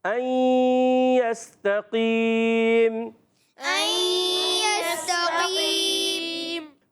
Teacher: غنہ ناک میں آواز جا رہی ہے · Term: ادغام مع الغنہ